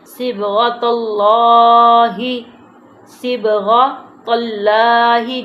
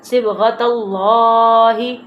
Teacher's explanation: صبغۃ اللہ، صبغۃ اللہ، جیسے کہ پہلا حروف جو پہلی حرکت ہے زبر، اللہ کے نام سے پہلے لام سے پہلے زبر آ جائے، لام کو موٹا کرتے ہیں